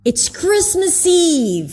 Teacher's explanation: he kind of like stresses everything except for it.